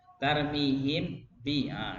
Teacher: Kan satu makhraj. Kalau izhar berarti 2 makhraj. Tarmihim bi, dibuka lagi ya, harus dibuka lagi.